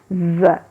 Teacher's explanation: جب زا کا مخرج آتا ہے تو ہماری زبان نیچے والے سامنے کے جو دانت ہیں ان کے مسوڑوں پر مضبوطی سے ٹچ کرتے ہیں تو ہلکی سی بزنگ ساؤنڈ آتی ہے اور ہلکی سی سیٹی کی آواز آتی ہے